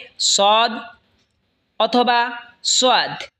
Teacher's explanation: সদ জিহ্বার আগা সামনের নিচের দুই দাঁতের আগার দিকে লাগা উচ্চারণ হবে সদ অথবা সোয়াদ